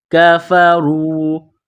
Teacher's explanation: کاف کو باریک کرنا ہے، را کو واو کے ساتھ ملانا ہے، را کو موٹا کرنا ہے